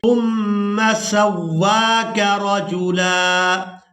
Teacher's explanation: واو کو کھڑی زبر کی وجہ سے کھینچ کر ادا کریں گے